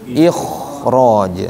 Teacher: di sini karena ro-nya tebal, makanya kho-nya jadi tebal